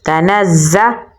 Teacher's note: نون کو ہم زا کے ساتھ ملائیں گے کیونکہ زا کے اوپر تشدید ہے اور سختی سے پڑھیں گے تنزا. لام کو لام کے ساتھ ملائیں گے کیونکہ لام کے اوپر جزم ہے.